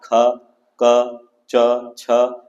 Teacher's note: प्रत्येक वर्ग का पहला और दूसरा वर्ण, इसे हम अघोष वर्ण कहते हैं, जो क से लेकर म तक है, अर्थात ख, क, च, छ ये सब अघोष वर्ण है। इनके उच्चारण में स्वर तंत्र में कंपन नहीं होती है।